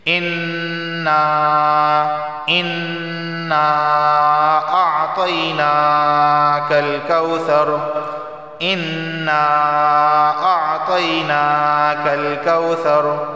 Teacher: انا کو کیوں کھینچ رہے ہیں؟ کیونکہ یہاں پہ چھوٹا سا مد آیا ہے، اس مد کو مد منفصل کہتے ہیں، کیونکہ انا کے آخر میں الف مد اور اعطینا کے شروع میں حمزہ آیا ہے تو یہ ہے مد منفصل، تو اس کو غنہ بھی کریں گے، کھینچیں گے بھی۔